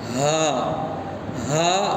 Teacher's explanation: اقصائے حلق یعنی حلق کا آخری حصہ، مطلب جو سینے کا طرف جو حلق ہے وہاں سے ہا نکلتا ہے، اندر سے نکلنا ہے.